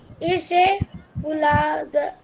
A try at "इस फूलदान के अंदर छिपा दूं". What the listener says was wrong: इसे इसे नहीं, इस फूलदान। ठीक इस फूलदान के अंदर छिपा दूं।